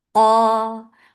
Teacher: Qaf is heavy, and the level of heaviness of qaf is lifted up because this is it with alif mad.